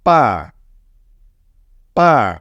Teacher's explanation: The fourth tone is from the top to the bottom